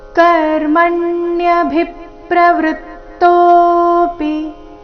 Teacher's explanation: ಚರಣದ ಕೊನೆಗೆ ಬಂದಿರೋ ಪಿ ರಸ್ವ ಬರ್ಬೇಕು ತೋ ದೀರ್ಘ ಹೇಳ್ಬೇಕು